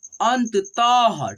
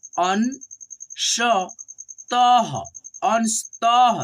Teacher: यहाँ पे देखिएगा अन त तह, देखिए यहाँ पे त पे दो विसर्ग है और आपको हमने बताया है कि दो विसर्ग को हम लोग ह के रूप में उच्चारण करते हैं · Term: अह की मात्रा